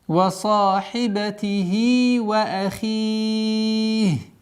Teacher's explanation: При остановке аннулируется кесра, переходит в сукун, и у нас долгота в размере 4 огласовок, как мы уже выбрали, кесру удлиняем.